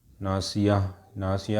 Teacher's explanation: ناصیہ کا جو تا ہے وہ ہا بن جائے گا